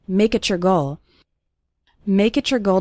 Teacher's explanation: make it your when we have a word ending in tea followed by the word you or your it often sounds like a CH sound so make it your goal sounds like make it your goal